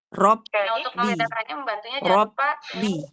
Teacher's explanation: Tutup mulutnya sebentar karena ba-nya di sini ada dua ya. Tasdid dia dua, ba yang pertama sukun harus kita tutupkan dulu dan kita syiddahkan.